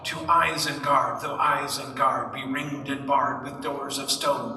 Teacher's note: Almost nowhere in Tolkien's poetry does he do a more regular iambic beat than this. But it's not always as hard as this.